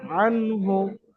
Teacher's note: নুন সাকিনকে বিনা গুনায় তাড়াতাড়ি পড়তে হবে, যেহেতু নুন সাকিনের পরে হরফে হালকি থেকে হা এসেছে